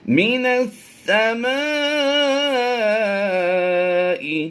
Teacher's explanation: حروف مدہ کے بعد حمزہ اسی کلمے میں ہے تو یہ مد متصل کہلائے گی